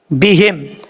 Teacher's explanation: میم ساکن کے بعد با آ رہا ہے، یہاں پہ غنہ کریں گے ایک الف کی مقدار